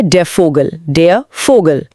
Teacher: क्योंकि यह है गोल्डन रूल नंबर तीन। जर्मन में वी का उच्चारण व नहीं बल्कि फ यानी अंग्रेजी के एफ जैसा होता है। अक्षर का नाम फाउ है और इसीलिए फोगल बन जाता है फोगल।